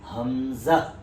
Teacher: हमजा झटके से अदा होगा